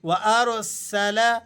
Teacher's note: سین باریک اور سیٹی والے حروفوں میں سے ہے